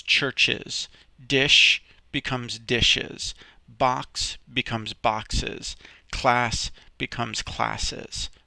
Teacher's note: these sounds are called syllabus and what that means is that you sort of sound like a snake when you're saying them so it's got this hissing sound